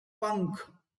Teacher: अनुस्वार की ध्वनि नाक से निकलती है।